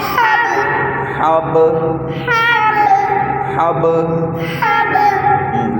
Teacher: ہاں، گلے سے حلق سے آواز دینی ہے چھوٹے بچوں کی طرح. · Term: گلے والا